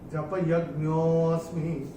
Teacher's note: तो जब हम इसको चैंट करेंगे जपयज्ञोऽस्मि, तो ओ को थोड़ा सा खींच के, ज्ञो को थोड़ा सा खींच के चैंट करेंगे थोड़ा देर तक, क्योंकि उसमें से अ निकल के आना चाहिए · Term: विलुप्त अ